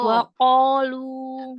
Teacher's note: Bedanya lidah belakang naik di huruf qaf.